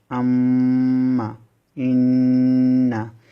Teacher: নাকের বাসি হতে গুন্না উচ্চারিত হবে